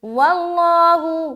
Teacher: لفظ اللہ کا لام موٹا رکھنا ہے